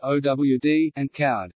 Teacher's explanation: In Birmingham and the Black Country, old and cold may be pronounced as owd and cowed.